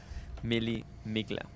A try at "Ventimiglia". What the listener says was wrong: No, you don't pronounce the G. It's Milia.